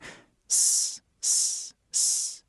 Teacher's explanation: The difference is voicing. For S, your vocal cords are off. It's pure air. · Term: unvoiced S